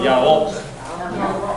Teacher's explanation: it's not like Spanish where it's a rrr, it's from the back.